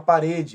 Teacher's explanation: é uma paroxítona a penúltima é mais forte mas não leva acento porque termina em e que é uma